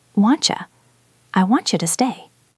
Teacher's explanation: In natural speech, that T and Y become wantcha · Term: CH sound